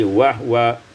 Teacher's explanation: wa huwa iskanul ha, disukunkan ha menjadi wahwa